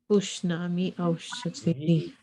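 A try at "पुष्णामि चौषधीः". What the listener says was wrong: So that word also or and is indicated by the word cha, that single word cha. So when cha and aushadhi combine, it becomes chaushadhi.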